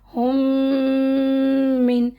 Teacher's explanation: मीम इदगाम शफवी में मीम पूरा पढ़ा जाएगा, उसके दोनों होठों को मर्ज भी अपने होंगे, दोनों होठ मिलेंगे भी, और नाक में गुन्ना भी होगा। · पूरा मा अंदर नाक में भी रखे, पूरा मीम दोनों होठ भी मिले, हुम मिन। अब देखिए यहाँ 3 मीम तो हो गए, मीम एक ये साकिन वाला اور 2 شد والا مطلب جس پہ جزا تشدید ہو تو 2 میم ہوتے نا، تو 3 میم نہیں پڑھتے یہاں پر.